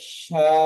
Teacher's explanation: বা আলিফের ডান শা দিকে র যাবার বা আছে, এটি আলিফ মাদ্দা, আলিফ মাদ্দাকে এক আলিফ পরিমাণ টান দিয়ে পড়তে হয়। রয়ের উপরে যাবার আছে, যাবারটি হলো হারাকাত, হারাকাতকে টান না দিয়ে তাড়াতাড়ি পড়তে হয়।